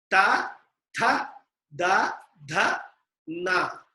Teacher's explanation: The Sounds produced by touching the tongue to the upper inner upper teeth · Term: dentals